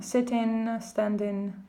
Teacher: the suffix ing is pronounced in instead of ing. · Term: Cockney accent